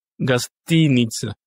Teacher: vous voyez que le O, qui est non accentué, se lit A.